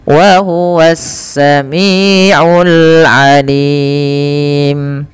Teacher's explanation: Wa huwas, ada alif lam syamsiyah, alif lamnya langsung diidghamkan ke sin, yang sehingga sinnya menjadi harakat tasydid